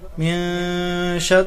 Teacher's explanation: را پر زیر ہے، را کو باریک کر کے پڑھیں گے